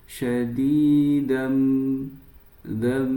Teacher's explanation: Cara membacanya masukkan tanwin tersebut langsung masuk set ke huruf mim dan digunahkan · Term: idgham bighunah